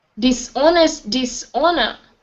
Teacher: Dishonest and dishonor. The H is silent. It's like saying honest, yeah, and honor.